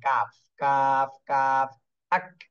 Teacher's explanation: এবারে কাপ দেখেন, জিহ্বার গোড়া থেকে একটু আগে বাড়িয়ে তার বরাবর করে তালুর সঙ্গে লাগাই কাফ উচ্চারণ হয়